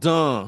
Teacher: So you say it through your nose, dun. So the N is not pronounced, but it makes the A be pronounced in a nasalized way through your nose.